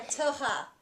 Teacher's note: it's kind of in the back of the throat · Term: hebrew r